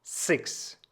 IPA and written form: zɛks (sechs)